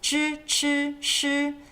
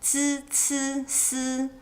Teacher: Retroflex equals zhi, chi, shi. Dental sibilant equals zi, ci, si. Zhi, chi, shi, zi, ci, si.